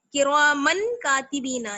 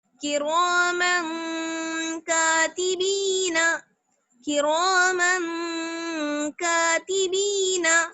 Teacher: من بالکل صاف نہیں پڑھیں گے، کرامن کاتبین نہیں، نون کی آواز کو چھپا لیجئے. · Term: اخفا